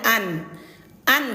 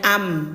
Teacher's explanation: karena sudah berjumpa dengan huruf ba, maka suara nun ini diganti menjadi huruf mim. Jadi bunyinya am gitu.